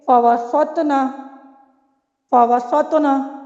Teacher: یہاں پہ دیکھیے تو ساکن ہے، یہ کلمے کے درمیان میں ہے، ہم نے اس پر وقف نہیں کیا بلکہ ہم اس قلقلہ کو ادا کرتے ہوئے اگلے حرف پر چلے گئے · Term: ساکن وصلی